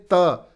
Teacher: त अगर बोलेंगे तो आपकी जीभ दांतों को स्पर्श करेगी। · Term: स्पर्श व्यंजन